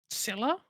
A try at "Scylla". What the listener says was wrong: Wrong, but close. But yeah, that's the one. Yeah, it's Scylla. There is no soft C in that language.